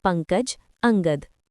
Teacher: अनुस्वार ये स्वर के बाद आने वाला व्यंजन है जिसकी ध्वनि नाक से निकलती है